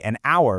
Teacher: because that H is totally silent, so the first sound you actually hear is a vowel